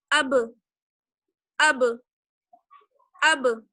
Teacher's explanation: تو اب جب آپ با کو پڑھیں گی ساکن کے ساتھ، حمزہ کو با سے ملائیں گی، تب کیا ہوگا؟ جو لپس ہیں آپ کے وہ ٹچ ہوں گے، اور ٹچ ہو کر ایک دوسرے سے فوراً الگ ہو جائیں گے